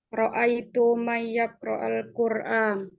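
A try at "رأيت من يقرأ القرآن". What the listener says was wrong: Ro'aitu man yaqra'al Qur'an. Kalau bahasa Arab itu jangan ditajwid ya. Jangan may yaqra'al Qur'an, jangan man. Nanti kalau ditajwid semua jadinya aneh kalau pelafalannya alta. Jadi kalau di bahasa Arab pelafalannya jangan ditajwid.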